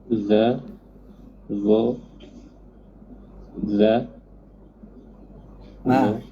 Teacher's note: ujung lidah dengan ujung gigi kacip atas keluar sedikit